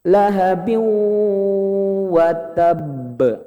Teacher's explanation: Masuk dulu lahabiu, yang kedua gunnahnya di hidung, ditahan. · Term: idgham bigunnah